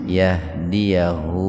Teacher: Huruf ha didahului huruf hidup, jadi hu-nya dibaca panjang dua ketukan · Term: mad silah qasira